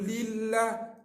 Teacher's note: Li, lam, kasrah, nipih. Jangan baca tebal.